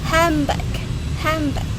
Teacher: The N also changed to M before B. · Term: regressive assimilation